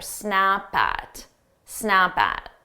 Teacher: So what I do is I take that P from snap and I also add it to at.